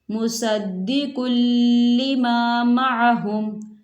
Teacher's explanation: یہاں تنوین ہے اور تنوین کے بعد لام آ رہا ہے، اور یہ حروف یرملون میں سے ہے تو یہاں ادغام ہوگا